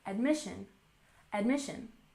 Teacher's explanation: Admission has stress on the second syllable